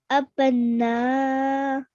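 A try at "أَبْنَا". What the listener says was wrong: Okay, a bit longer. Okay, I know I'm telling you again and again to do a bit longer, but it's because of this Madulkabir that we have to stretch our sound for at least 4 counts.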